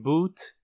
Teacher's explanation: o som do o longo como in boot costuma ser mais anterior que o normal em vez de ser uma vogal posterior fechada arredondada o ele · o som do U longo, como em boot, costuma ser mais anterior que um U normal. Em vez de ser uma vogal posterior fechada arredondada, U, ele é uma vogal quase posterior fechada arredondada, Então, podemos descrevê-lo colocando o símbolo de avançado embaixo da vogal posterior fechada arredondada.